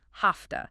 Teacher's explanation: have to is a classic reducer because the V in have is voiced but the T in to is voiceless. The often becomes voiceless too, sounding like an F.